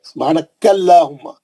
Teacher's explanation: सुब्हानकल्लाहुम्मा, क्योंकि अल्लाह के नाम से पहले कैफ पे जबर है, सुब्हानकल्लाहुम्मा, काफ पे जबर रहने से अल्लाह का नाम मोटा पड़े